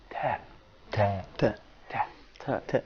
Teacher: Here in the voicing states, you can find that the airstream doesn't make any kind of vibration in the vocal flaps. So that means it's described as a voiceless sound.